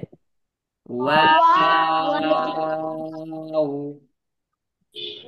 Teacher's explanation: যখন আমরা ওয়াও উচ্চারণ করব, প্রথমে ঠোঁটটা পুরোপুরি গোল হবে, তারপরে ওয়াও বলার সময় একটু ফাঁকা হবে, আবার গোল হবে। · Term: ঠোঁট একদম গোল